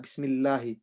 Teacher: It's got a kasra before it, so we say it with empty mouth.